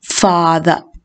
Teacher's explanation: the word father has 2 syllables and the first syllable is stressed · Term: tonic syllable